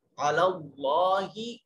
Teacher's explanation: अलल्ला में कलमा इसमें जलालत से पहले वाले हर्फ के ऊपर जबर है, तो जलालत के लाम को, इसमें जलालत के लाम को मोटा और पुर करके पढ़ा जाएगा। और कलमा जलालत, इसमें जलालत के लाम के ऊपर खड़ी जबर अलिफ अल मद्दिया सगीरा है, इसको एक अलिफ के बराबर लंबा करके पढ़ेंगे।